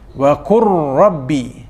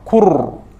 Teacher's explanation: Ar juga berkait dengan hujung lidah, jadi makhraj yang sama, cuma dipandukan, dipermudahkan dengan tanda-tanda ini, maka sebutan ini dimasukkan, sebutan lam dimasukkan ke dalam sebutan ra, dipermudahkan melalui tanda sabdu. Qur, terus kepada ra, qur, itu idgham, ya. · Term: idgham mutajanisain